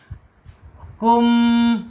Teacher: Asyafatain yang pertama yaitu dua bibir. Yang kedua yaitu alkhaisum ya rongga hidung ya. Kum masuk ke hidung. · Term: Mim